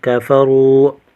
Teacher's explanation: را کو موٹا کریں گے، واو ساکن ہے، واو ساکن سے پہلے پیش ہے واو مدہ، ایک الف کھینچ کر پڑھیں گے